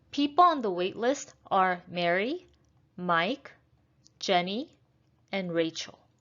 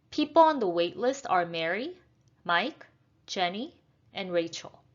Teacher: So we're going to have rising and then falling intonation.